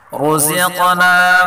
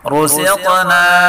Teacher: را کو پر پڑھیں گے اور قاف میں قلقلہ بھی کریں گے